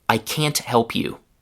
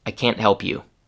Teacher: The first time with the full t sound and the second time with a stop t.